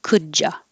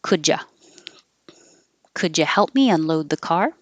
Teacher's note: the d and the y make a ja and the u can change to uh